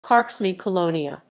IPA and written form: ˈkart͡ʂmɨ kɔˈlɔɲa (Karczmy-Kolonia)